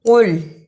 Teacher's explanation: اسے کل نہیں پڑھنا، قاف کو موٹا پڑھنا